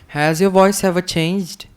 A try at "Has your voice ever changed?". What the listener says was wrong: Has your voice, not wife, voice. Has your voice ever changed? If the question is, has your wife ever changed? So, has your voice, this voice ever changed?